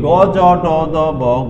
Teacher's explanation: যে ধ্বনি উচ্চারণ করার সময় কণ্ঠ অনুরণিত হয় তাকে বলা হয় ঘোষ ধ্বনি